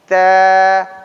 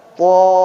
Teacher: Istifal itu datar aja bawah. Ta. Tapi kalau isti'la udah angkat ke atas.